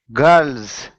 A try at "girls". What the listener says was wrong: So I'm hearing gulls. I'm hearing gulls. But I want to hear girls. So try saying girls. Girls. So when you're making the your tongue should be kind of back like this. Girl.